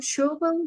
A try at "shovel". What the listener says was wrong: Shovel. So can you, it actually pronounce it with an A instead of an O. Shovel.